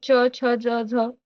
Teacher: हे टाळू टाळू मधून निघणारे व्यंजन आहेत